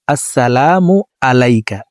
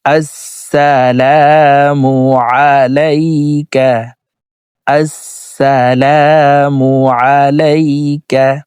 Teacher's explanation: আইন হরফকে হলকের মধ্যখান থেকে উচ্চারণ করতে হবে।